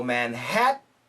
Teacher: Now the perfect pronunciation in America would be Manhattan, Manhattan, Manhattan. But most Americans will say Manhattan, which is a glottal stop